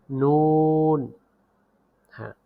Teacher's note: হ্যাঁ, পরের হরফ নুন। জিহ্বার আগা তার বরাবর উপরের তালুর সঙ্গে লাগিয়ে উচ্চারিত হয় নুন